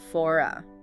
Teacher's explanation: But in for me, the m in me is a consonant sound. So the r in for usually isn't pronounced. It's silent.